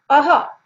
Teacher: अ plus विसर्ग, ह की आवाज गले से जो निकल रही है